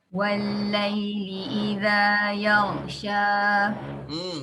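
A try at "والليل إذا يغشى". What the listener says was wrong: Dah masih terangkat. Maksudnya masih meninggi. Sya pun masih meninggi.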